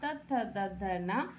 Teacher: त वर्ग दंत से उच्चारण होता है